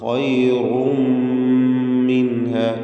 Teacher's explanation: ഖൈറും, റായിന് തടിപ്പിച്ചുകൊണ്ടുള്ള ശബ്ദം കൊടുക്കുക. തൻവീൻ, റായിൻ്റെ തൻവീനിന് ശേഷമുള്ള മീമിൽ പൂർണ്ണമായും ലയിപ്പിച്ച് മണിക്കണം. ഖൈറും മിൻഹ, ഇദ്ഗാം ബിഗുന്ന കാമിൽ.